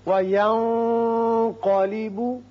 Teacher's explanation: وَيَنْقَلِبُ یہاں نون پر اخفا کیجئے اور قاف پر پڑھیے